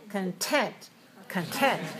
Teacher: And then, content, stressed on the second syllable. So the k is not strongly released.